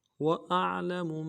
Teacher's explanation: وما كنتم تكتمون وأعلم، واو کو نرم سے ادا کرنا ہے، حمزہ کو عین کے ساتھ ملانا ہے، عین کو موٹا ادا کریں گے، عین میں آواز جاری رہے گی